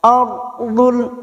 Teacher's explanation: ro tafkim atau ro tebal, posisi bibir kita seperti orang yang cemberut, bukan tersenyum